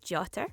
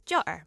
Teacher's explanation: I can pronounce it as jotter with a T in the middle, or as jotter with a glottal stop in the middle